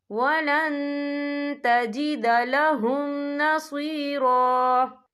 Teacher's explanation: من النار ولن تجد لهم نصیرا، یہ دیکھیں ولن، یہاں نون ساکن ہے، نون ساکن کے بعد جو ہے تا آ رہا ہے، اور تا جو ہے اخفا کا ورڈ ہے تو ہم یہاں اخفا کریں گے، نون ساکن کی آواز کو ناک میں چھپائیں گے